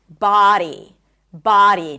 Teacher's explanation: So, body has the a as in father sound. Body. So, you need to drop your jaw. Ba. And take your time.